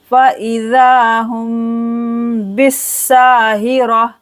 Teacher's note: मीम साकिन के बाद बा आ गया है तो यहाँ पर करेंगे इख्फ़ा शफ़वी। फ़इज़ा, 2 सेकंड के लिए खींचना है, दाल को मीम पर गुन्ना करेंगे।